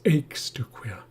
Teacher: The emphasis is on the first syllable.